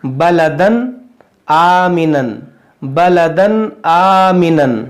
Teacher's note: चूंकि तनवीन के बाद हम्ज़ा है , इसलिए हम यहां इज़हार का नियम लागू करेंगे और इसे बिना गुन्नाह के पढ़ेंगे।